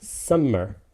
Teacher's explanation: i say it summer meaning stress unstressed